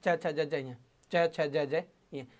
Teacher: देखो च का उच्चारण अपन जो सामान्य रूप में करते हैं वो थोड़ा अशुद्ध रहता है, अपन बोल देते हैं च छ ज ज ये, च छ ज ज ये, जीभ आपके मसूड़ों के आसपास टच कर रही है, लेकिन इसका शुद्ध उच्चारण ऐसे मानते हैं साथियों कि जो आपके काकल है ना, काकल के जस्ट आगे से आपको जीभ को उठाना है, यानी पीछे से जीभ को आपको क्या करना है, उठाना है।